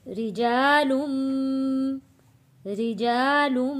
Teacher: لام کو جوڑیں گے میم والی تشدید کے ساتھ، لم غنہ بھی ادا کرنا ہے